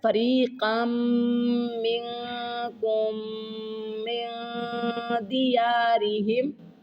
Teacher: یہ میم مشدد ہے، اس کے اوپر غنہ کریں گے، اور اس کے ساتھ والی میم نون جو ہے وہ اس کے اوپر اخفا کریں گے.